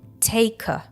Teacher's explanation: The main stress falls on the word take, and when followed by the article a in its weak form, the two words get linked.